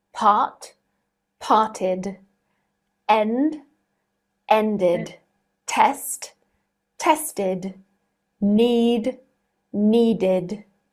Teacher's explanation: ed is pronounced as id. This means that it adds on an extra syllable.